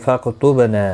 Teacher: با ساکن پر قلقلہ ہوگا